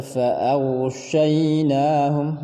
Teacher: sifat gha itu namanya ar-rakhawa, mengalir atau terlepas. Dibaca fa'aghshaynahum, mengalir dan tebal.